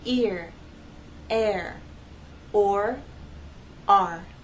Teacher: you actually have two vowel sounds that are gliding and blending into each other to make one